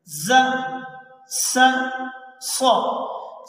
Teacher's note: زبان کی نوک کو سامنے والے دانتوں کی جڑ سے ہم لگا کر رکھتے ہیں تو یہ 3 حروف ادا ہوتے ہیں ز س ص۔ زبان کی نوک سامنے والے نیچے والے دانتوں سے نارمل انداز میں لگی ہوئی ہے۔